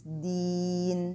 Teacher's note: So here I don't have tajweed rules except for the word deen. Here I have to prolong this ya in this word, a prolongation for stopping.